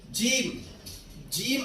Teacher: जीम अदा होता है जबान के दरमियान और तालू के दरमियान से यानी ये दोनों हिस्से जबान का दरमियान और ताल के दरमियान